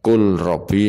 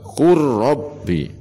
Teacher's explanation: Contoh lam sukun bertemu ra, kul robbi harus dibaca kur robbi. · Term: idgham mutaqaribain